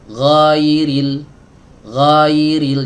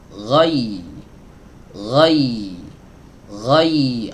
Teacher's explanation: Jangan sampai kita telat masuk ke huruf ya. Dari ghain ke huruf ya ini nggak boleh diayun teman-teman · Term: lin